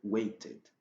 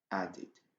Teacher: Mais quand vous avez un verbe qui se termine par le son de ou le son de, alors les ed est prononcé par id, id. Par exemple, wait, ça va devenir waited.